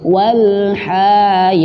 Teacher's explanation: Ya panjang 2 harakat. Jangan sampai ha-nya keikut bawa panjang